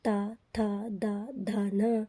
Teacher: अगर आप इन वर्णों को बोलेंगे तो ऐसा लगेगा कि आपकी जो जीभ है वह दांतों से टकरा रही है